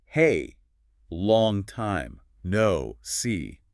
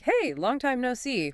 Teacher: It's probably faster, more cheerful, maybe with extra emphasis on hey and perhaps C. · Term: rising, friendly intonation